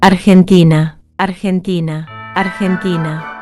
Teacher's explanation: The soft G sound in Spanish sounds exactly like the J we just learned. In Spanish, when the letter G comes before E or I, it makes the same throaty J sound. · The G before E makes the throaty J sound.